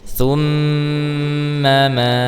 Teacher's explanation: Nah, di sini ada gunnah musyaddadah yang mimnya bertasydid, maka betul rasakan khaysyumnya betul-betul terasa ketika mengucapkan huruf mimnya, ketika menahan huruf mimnya